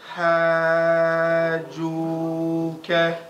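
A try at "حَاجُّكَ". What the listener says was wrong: Hajjuka. Remember guys, be careful saying hajjuka, not juka. Hajj. Hajjuka. Shadda.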